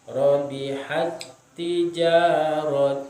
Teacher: Kemudian tak yang kedua tijaratuhum. Cara membacanya seakan-akan hak itu bertasdid dengan huruf tak yang kedua, menjadi robihat tijaratuhum.